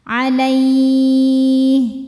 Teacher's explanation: Huruf linnya ya sukun didahului fathah, huruf yang disukunkannya huruf ha. Jadi kalau berhenti ini panjang ya, boleh 2, boleh 4, boleh 6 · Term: madlin